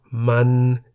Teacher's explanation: A syllable beginning with a low-class consonant and having a sonorant final consonant is in the middle tone. For example, มัน meaning it.